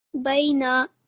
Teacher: This is just going to be 1 second on the noon.